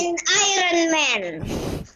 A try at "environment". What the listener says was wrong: Environment bukan Iron Man ya.